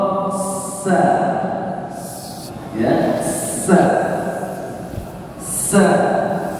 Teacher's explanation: keluar akini angin ya sedangkan huruf SH dia tidak Puni juga hanya angin juga yang berhebus diikuti dengan bunyi desis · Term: huruf sin